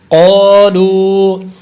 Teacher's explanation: قا پہ الف مدہ ہے، لو پہ واو مدہ ہے، اس لیے دونوں کو برابر لمبا کریں گے